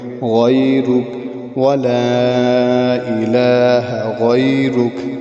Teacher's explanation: را کے اوپر پیش ہے، موٹا پڑھیں گے